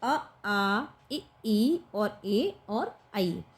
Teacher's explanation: जिन स्वरों के उच्चारण में होठ व्रतमुखी या गोलाकार नहीं होते, तो गोलाकार नहीं होते कौन कौन ध्वनियों में, अ, आ, ई और ए और आई में क्या होगा कि अवृतमुखी, यानी कि हमारा जो मुंह है जब हम इन ध्वनियों को बोलते हैं तो हमारा पूर्ण रूप से वो गोल नहीं बनता, ठीक।